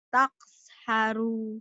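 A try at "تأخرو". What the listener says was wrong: Kokolahnya mana? pendek. Tak haru. Gak ada yang panjang Kayak orang kayak orang judes, kayak orang marah. Tak haru.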